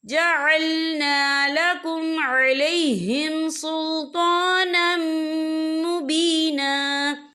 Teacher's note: یہ دیکھیں علیہم سلطانم، نم یہاں نون کے اوپر تنوین ہے، تنوین کے بعد جو ہے میم آ رہا ہے، اور میم جو ہے حروف یرملون میں سے ہے، تو یہاں پر ادغام ہوگا، تو ہم اسے غنّے کے ساتھ پڑھیں گے